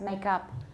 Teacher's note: it's probably going to be a wedge because it's stressed, make up